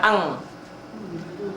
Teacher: Sekarang bunyi n-nya, bunyi nun mati atau tanwin dibaca antara n dengan bunyi huruf yang ada di hadapannya, tetapi pada umumnya berbunyi ang, samar. Kayak orang bindeng, samar, ang.